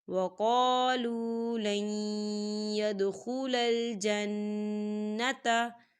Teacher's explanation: نون ساکن ہے، نون ساکن کے بعد یا آ رہا ہے، یا جو ہے حروف یرملون میں سے ہے تو یہاں پر ادغام ہوگا، ہم لام کو جو ہے یا کے اندر مدغم کریں گے، کیسے؟